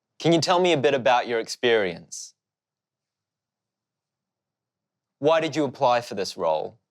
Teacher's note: Maybe you notice the interviewer's voice going slightly down at the end of the question. This is called falling intonation, and we use it for questions when we're asking for more information.